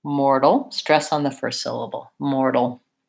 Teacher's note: I have a little, maybe small schwa sound, and then a final L sound, which it sounds like an ol, rather than a l, a light front L.